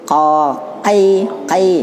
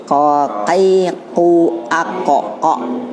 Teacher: kalau ko dia huruf pangkal lidah, ya, pangkal ke dalam, tambah ke dalam